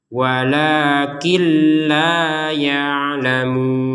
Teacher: Maka kita masukkan nunnya ke lam sehingga terbacanya walakil bukan walakin